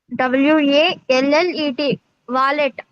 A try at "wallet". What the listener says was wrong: వాలెట్ కాదు, వ్యాలెట్ అనాలి. వాలెట్ అనకూడదు నాన్న, వ్యాలెట్ అనాలి.